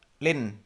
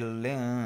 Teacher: Ada dengungnya harus terdengar. Jadi tidak lin tapi ling dengung.